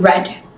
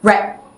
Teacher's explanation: she produced a tapped or slightly rolled r, similar to the sounds found in Spanish and Tagalog